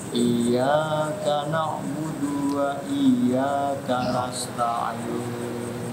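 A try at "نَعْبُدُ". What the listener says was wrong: Salah yang merubah arti. Da di sini nggak panjang.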